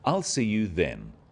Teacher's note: Notice how the stress is on the word then to confirm that the time is definite.